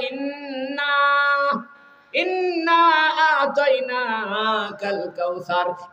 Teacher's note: নাকের বাঁশির ভিতরে উচ্চারিত হয়